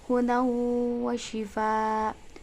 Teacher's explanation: terdapat bacaan idgham biguna sebab tanwin bertemu dengan wawu. Wa shifa'u, terdapat mad wajib mutasil sebab mad tabi'i bertemu dengan hamzah dalam satu kalimat.